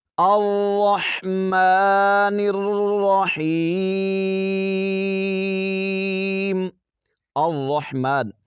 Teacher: یہاں پر را کو موٹا پڑھیں گے، جماؤ کے ساتھ ادا کریں گے۔ ہا کو حلق کے درمیانی حصے سے۔